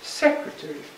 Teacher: 4 syllables, like this, stressed on the first